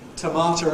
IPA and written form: təˈmɑːtər (tomato)